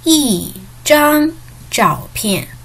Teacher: we change the tone of 一 It turned to be the fourth tone.